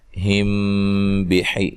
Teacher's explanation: میم ساکن کا اخفا ہے، ٹھیک ہے، غنہ کر کے پڑھیں گے